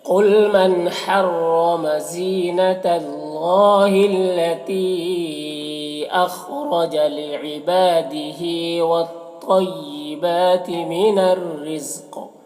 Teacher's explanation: وقف کی صورت میں قاف حروف قلقلہ میں سے بھی ہو جائے گا